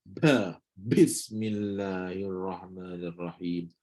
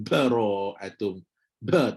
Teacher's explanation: Ba ni syiddah. Sama macam huruf dal. Syiddah. Tak ada angin.